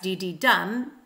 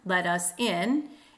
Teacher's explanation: an anapestic foot, which is three syllables, two unstressed, one stressed